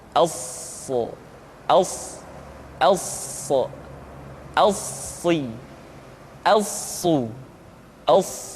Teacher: Untuk memudahkan pengucapan huruf sa, Perhatikan sifat as-safir yang dimiliki oleh huruf sha, yaitu suara tambahan yang terdengar menyerupai dengan suara angsa.